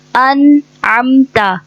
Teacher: نون کو ہلانا نہیں ہے، نہ نون کو حرکت دینی ہے. نون پہ جزم ہے اور نون کا مخرج سے ادا کرتے ہوئے حلق کے درمیانی حصے سے ادا کرتے ہیں اور اس کو پڑھتے ہیں انعمت.